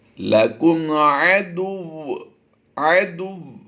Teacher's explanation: جب بھی مشدد حرف پر ہم وقف کریں گے تو اس کی حرکتوں کو ختم کر دیتے ہیں اور شد کو باقی رکھتے ہیں. تو یہاں پر شد کو باقی رکھیں گے تو واو کی ادائیگی دال کی پیش کے ساتھ ملا کر کریں گے